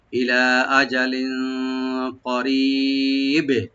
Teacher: বাতে একটু অবশ্যই কলকলা করবো আমরা